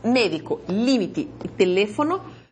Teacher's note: Palabras esdrújulas porque la antepenúltima es la sílaba tónica.